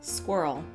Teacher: Yeah, it's it's a very subtle difference, but somebody pointed out to me that Americans more or less say squirrel in one syllable